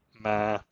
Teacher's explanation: usually produces a low tone, a relatively lower register than the speaker's normal voice, slightly creaky. Ma. If you need mnemonics, the accent mark, the small stroke, weighs the akshara down, and the dead speak with a creaky voice and lie low.